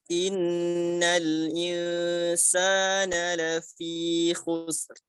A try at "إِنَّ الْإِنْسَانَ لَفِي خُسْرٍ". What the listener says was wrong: Ra-nya tebalkan. La fi khusr.